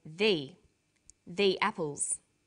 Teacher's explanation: there is a difference in pronunciation though when the comes before a vowel sound we say thee